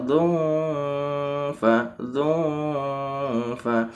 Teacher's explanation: dengan Fa maka harus dibaca Ifa karena ini namanya bacaan Ikhfa ikhfa itu samar dan disisipi dengan ee agak suara dengung